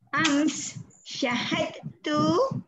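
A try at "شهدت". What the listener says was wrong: Syah bagi panjang. Syahadtu.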